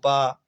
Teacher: ये दोनों ओठों के स्पर्श से बोले जाते हैं। तो जिन वर्णों को दोनों ओठों के स्पर्श से बोला जाए वो हमारे ओष्ठ वर्ण कहला जाते हैं।